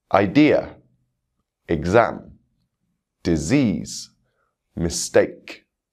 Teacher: You can hear the stress falling on the second syllable in these words.